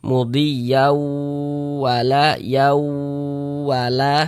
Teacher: Tapi dibaca mudhiyau seperti itu. Kemudian dighunahkan atau didengungkan. Jadi suaranya itu kita tahan kita panjangkan sejenak. Di bagian mudhiya di bagian yaunya itu kita tahan kita panjangkan sejenak sepanjang dua harakat.